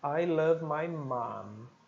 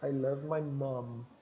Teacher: o americano vai dizer I love my mom, mais puxado para o A. E o britânico vai dizer mais puxado para o som do schwa, aquele som mais para dentro, né?